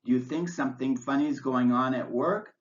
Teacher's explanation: Is a yes-no question, so it has rising intonation.